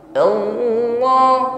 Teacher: Lafaz Allah kan terdiri dari lam, ha kan begitu. Lamnya ditasydid, maka sifat tawassut pada pengucapan Allah ini lebih nampak.